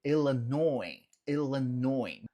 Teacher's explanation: Note que em Illinois a gente não pronuncia o S no final